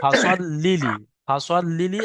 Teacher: লামের উপরে তাসদিদ আছে, লামটা দুবার উচ্চারণ হবে।